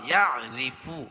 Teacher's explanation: الٹا پیش قائم مقام واو مدہ کی اس کو ایک الف کے برابر کھینچ کے پڑھیں گے